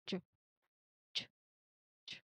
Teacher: So, you can feel the air and the voice pushing through the small um block. So, it is a strong voiced sound that starts with a quick stop.